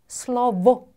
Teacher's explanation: 이빨과 입술이 조음에 참여하기 때문에 순치음이라고 하죠.